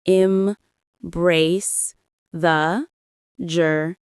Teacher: The stress is on the second syllable of embrace and the first syllable of journey.